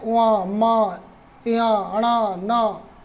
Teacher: जो वर्गों के पंचमा अक्षर हैं उनका उच्चारण स्थान क्या है, नाक, नासिका।